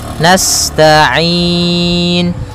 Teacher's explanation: sifat sinnya sempurnakan dengan mengalirkan nafasnya